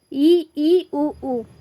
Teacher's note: इस स्वर के उच्चारण में मुख द्वार कम खुला रहता है